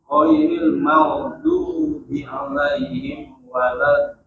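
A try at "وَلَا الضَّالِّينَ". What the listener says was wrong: Baru 4 harokat. Dia harus 6 mad lazim kalimi mutsaqqal.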